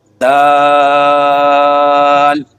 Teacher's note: زبان کی نوک ثنایا علیہ کی جڑ سے لگے تو اس وقت یہ لفظ ادا ہوگا